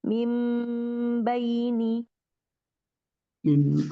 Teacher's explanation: Jadi lebih jelas lagi temponya dan durasinya tidak terburu-buru ya. Ditahan dua sampai tiga ketukan. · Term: iqlab